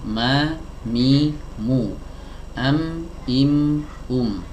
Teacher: huruf mim sebagaimana kita ketahui, ia dikeluarkan dari dua bibir yang dirapatkan.